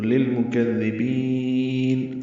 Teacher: اب جب وقف کریں گے نون پہ تو مد عارض سکون بن جائے گی ، تو للمکذبین اور لمبا کر دیں گے۔ اس دن جھٹلانے